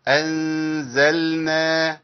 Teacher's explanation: ماخليش اللام تخش في النون · لان اللام والنون قريبين في المخرج وسهل جدا ان انا ادخلهم ايه في بعض